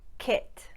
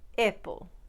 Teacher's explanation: the short ah sound in words like cat and apple have a couple of variations in russian but the most common is definitely turning it into e